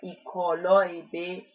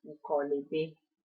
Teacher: And in order to avoid disruption, the vowel at the end of the first word is dropped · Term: contraction